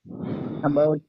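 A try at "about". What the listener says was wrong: లోపల మింగొద్దు.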